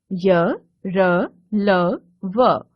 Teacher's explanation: अंतस्थ व्यंजन, जिन वर्णों का उच्चारण स्वरों एवं व्यंजनों के बीच का लगता है, उन्हें अंतस्थ व्यंजन कहते हैं। इनके उच्चारण के समय जीभ मुख के किसी भाग को पूरी तरह स्पर्श नहीं करती। य, र, ल, व, ये 4 अंतस्थ व्यंजन हैं।